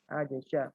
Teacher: Idhar ya, huruf jinnya dibaca jelas, sya juga dibaca jelas.